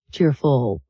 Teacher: To pronounce it naturally, put the stress on the first part of the word cheerful